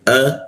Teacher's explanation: alif atau hamzahnya itu ee ditenggorokan bagian bawah